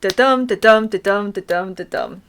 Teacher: and blank verse so I Amic pentameter is when you've got lines of 10 syllables with one unstressed syllable followed by a stressed syllable